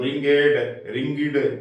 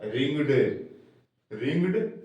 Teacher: ईडी लगा दिया तो रिंगेड, रिंगिड आदि नहीं बोलेगा, ये बोलेगा रिंगड, रिंगड, केवल ड आ जाएगा